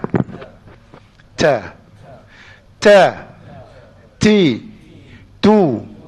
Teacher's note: Huruf Ta adalah huruf yang dikatakan suara yang tahan, tapi ada nafas.